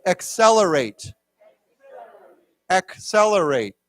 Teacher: the first C has a k sound and the second has a s sound